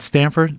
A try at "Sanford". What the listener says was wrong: Sanford. No T. Sanford MMA.